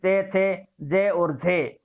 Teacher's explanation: और चे वर्ग को स्पर्शी संघर्षी कहते हैं क्योंकि चे वर्ग को बोलते समय उच्चारण स्थान के जिस भाग को जीवा छूती है वहां पर संघर्ष करना पड़ता है